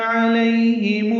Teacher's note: علیہم میں عین وسط حلق سے ادا ہوگا